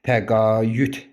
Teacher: Həm y səsi artırılıb, səs artımı, həm də d-t əvəzlənməsi baş veribdir. Səs dəyişməsi, fonetik hadisəsi baş veribdir. · Amma təqaüd sözündə tələffüzü və yazılışı arasında iki fərqli məqam var. Həm y səsi artırılıb səs artma, həm də Dt əvəzlənməsi baş veribdir · Tələffüz zamanı i ilə ə arasında y səsi artırılmış olunacaq.